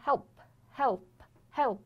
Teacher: 所以说接辅音或者是没有音了的时候呢，它都是发一个 dark l